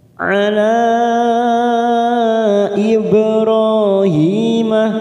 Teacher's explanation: Huruf ba sukun qalqalah sugro kita pantulkan. Ro fathah berdiri 2 harokat.